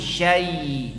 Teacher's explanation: Beratkan ke i karena setelahnya ada ya mati. Syai. Jangan ke e.